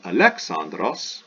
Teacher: we have smooth breathing, no H.